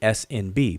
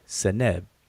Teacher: between all of the consonants in these in these egyptian words this what they call a schwa or a short e vowel sound in between all of the consonants